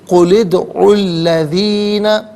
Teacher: دونوں مقامات میں درمیان میں سے الف یعنی حمزہ کو حذف کریں گے · اب یہ دال ساکن ہے لیکن چونکہ حرف قلقلہ ہے تو یہاں آواز لوٹتی ہوئی محسوس ہونی چاہیے۔